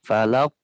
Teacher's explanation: Nah, sini ada qalqalah ya, falaq. Jadi harusnya qalqalah di akhir itu harus besar ya, besar tebal